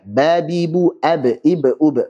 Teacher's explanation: Kemudian untuk ba dia dua bibir nempel.